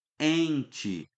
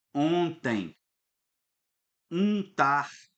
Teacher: quando a vogal ela está acompanhada ali com um M ou com um N e você percebe, opa, ele está aqui nasalizando, estou jogando som pelo nariz